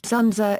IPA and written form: ˈzʊndzə (Dzundza)